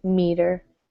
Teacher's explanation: the first syllable is stressed, so a long E, meter.